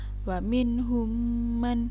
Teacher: yaitu ada huruf mim mati bertemu dengan mim yang berharokat otomatis huruf mim yang mati ini dimasukkan ke dalam huruf mim yang berharakat seperti tasydid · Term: Idgham Mimi